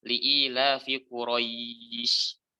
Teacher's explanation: kadar mad yang panjangnya itu lebih dari 1 harokat, tapi kurang dari 2 harokat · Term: lin